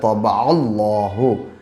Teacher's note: اور اللہ کے لام سے پہلے جب زبر ہو تو اللہ کا لام پر پڑھا جاتا ہے، طبع اللہ۔ لام کے اوپر کھڑا زبر ہے، کھڑا زبر ایک الف کو برابر کھینچا جاتا ہے، ہاں کے اوپر پیش ہے، پیش کی آواز آگے کو جاتی ہے اور ہونٹ گول ہوتے ہیں۔